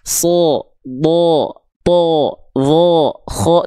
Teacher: Nah, kalau huruf tebal itu, ketika huruf tebal, ya yang karakternya tebal dia berharokat baris atas atau fathah, maka bunyi vokalnya itu bukan condong pada vokal A, tapi akan lebih terdengar seperti vokal O. Seperti vokal O, bukan betul-betul vokal O, tapi seperti vokal O.